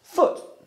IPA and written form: fʊt (foot)